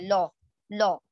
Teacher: ہم اس لام کو پر کر کے یعنی ہیوی کر کے, موٹا کر کے پڑھیں گے. جس طرح سے ہم انگلش میں لا پڑھتے ہیں, لا, ٹھیک ہے, جس طرح سے ہم انگلش میں لا پڑھتے ہیں اس طرح سے آپ نے کیا کرنا ہے, اسے موٹا کر کے پڑھنا ہے. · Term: لام جلالہ